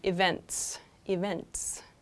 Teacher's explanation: It sounds like events, events, which would make like a Z sound. So the T is pronounced, it's just kind of softened. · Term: TS sounds